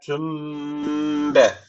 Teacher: itila tecvidi var demektir arkadaşlar ne yapacağız şöyle okuyacağız tüm yani tüm diye dudağı kapatıyoruz bir Elif miktar tutuyoruz sonra B diye açıyoruz